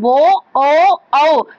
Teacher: కంఠోష్ట్యం అంటే కంఠం ఓ, ఔ పెదాలని మనం ముందుకి పెట్టి కంఠం ద్వారా పలుకుతాం కాబట్టి వాటిని ఓ, ఔలని కంఠోష్ట్యాలు అంటారు.